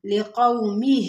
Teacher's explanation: واو لین کو نرمی اور جلدی کے ساتھ پڑھیں گے، یعنی لقو نہیں پڑھیں گے، لقومہ، ہا کے نیچے کھڑی زیر ہے تو اس کو تھوڑا سا کھینچیں گے، لقومہ، یا قومی، یا کے اوپر کھڑا زبر ہے، تھوڑا سا کھینچیں گے۔